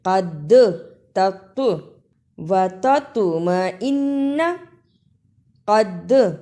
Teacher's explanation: حروف قلقلہ کو ادا کرنے کا طریقہ یہ ہے کہ آواز پلٹ کر واپس آئے